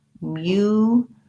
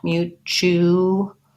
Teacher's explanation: This T says the CH sound, mutual, and then we have a dark L with a schwa.